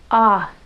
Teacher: Ah is a low back vowel.